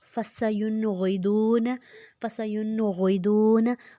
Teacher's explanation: ہم نے موٹا رکھنا ہے، غائن جو ہے حروف حلقی ہے، غائن کو موٹا بھی رکھنا ہے اور اس کے پیچھے جو نون ہے اس پہ جزم ہے تو اس کو ہم نے غنہ نہیں کرنا